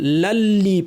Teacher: লাম গিয়ে সরাসরি পরের লামকে ধরবে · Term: ইদগাম